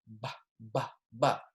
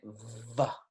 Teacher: I'm not using a fricative consonant here. It's a bilabial consonant.